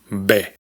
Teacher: Esta letra representa el sonido de nuestra B, es decir, la oclusiva bilabial sonora